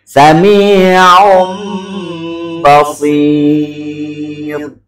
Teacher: pengucapan nun mati atau tanwin yang bertemu dengan huruf ba, yang berubah menjadi mim dan disertai dengan gunnah atau dengung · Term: iklab